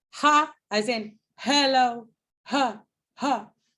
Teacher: Your lips are not doing anything. The obstruction in ha, in hello, is occurring here with your vocal folds. Okay, so it's called a glottal sound.